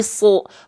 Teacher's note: huruf Shad ketika fathah dibacanya bukan sah kan tapi su vokalnya O karena dia huruf yang tebal